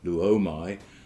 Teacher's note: Luomai, the omicron is lengthened to omega